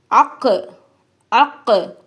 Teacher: நாவுடைய இறுதி இருக்குல்ல, அது வந்து, மேல இருக்கக்கூடிய மென்மையான முகடை தொடணும். வேற ஒன்னும் இல்ல, அந்த உள்நாக்கு இருக்கக்கூடிய அந்த சதை, உள்நாக்குக்கு மேல இருக்கக்கூடிய சதையை வந்து, நா உவுடைய இறுதி வந்து டச் பண்ணனும் அப்படின்னு சொல்லி இருக்காங்க. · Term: காப்